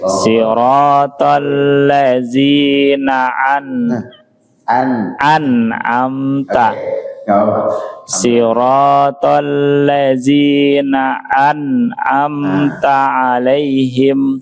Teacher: Yang pertama hamzah an'amta, baru yang kedua ain, tidak boleh saling tertukar.